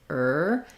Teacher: the r position tongue pulled back and tight